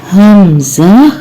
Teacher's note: اس کی آواز بھی حلق کے آخری حصے سے آ رہی ہے